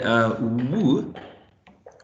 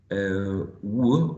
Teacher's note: It's voiced and is a labiovelar, because when we produce this sound, we use the lips, right? And also the back of the tongue is raised against the velum or soft palate. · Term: glide